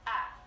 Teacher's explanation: The diphthong I becomes ah, and it's not a lengthened ah like you hear in a Mississippi accent, but it's ah, as in tanny, man, just like that.